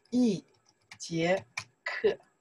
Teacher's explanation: 一, four tones. 节, second tone. 课, four tones